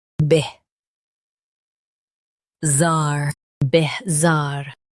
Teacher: Stress zar and keep bih soft.